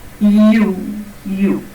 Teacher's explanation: One is the sound year and the other is the vowel oo together, forming the sound U.